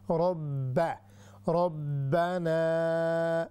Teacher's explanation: ہم نے را کو ہیوی کرنا ہے، با کو باریک